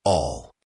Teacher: the L sound in all is often a dark L where your tongue is lower in your mouth.